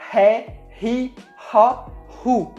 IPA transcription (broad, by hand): ʁ